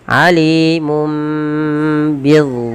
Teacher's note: Awalnya alimun ketemu ba digantikan dengan mim dan ditahan.